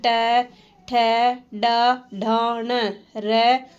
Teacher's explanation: ट वर्ग यानी ट ठ ड ढ ण र और श ये मूर्धा से बोले जाते हैं